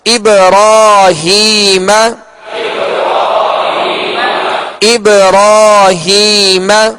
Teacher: اور یہاں با ساکن ہے لہذا اس کو ابراہیم نہیں بلکہ ابراہیم جی قلقلہ کر کے پڑھیں گے. اور را پر کھڑا زبر ہے تو را کو پر پڑھیں گے یعنی موٹا پڑھیں گے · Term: پر یعنی موٹا